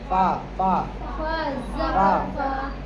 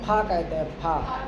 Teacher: اوپر کے دانتوں کا سرا نیچے کے ہونٹ سے ملتے ہیں.